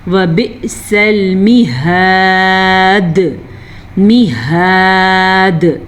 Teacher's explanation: دال پہ کلکلا ہو رہا ہے کیونکہ ہم وقف کر رہے ہیں تو وقف کی وجہ سے دال ساکن ہو گئی.